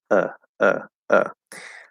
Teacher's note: The schwa is kind of just in the middle of the tongue. It's supposed to be kind of relaxed, whatever. Okay, um, and it's sort of like middle this way, middle this way.